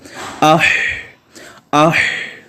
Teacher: آواز جاری ہے، سانس جاری ہے اور آواز آہستہ آہستہ ختم ہوتی جائے گی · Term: صفت ہمس